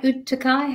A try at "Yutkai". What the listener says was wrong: So we pronounce it without, we call it a silent T. So we call it Yukai.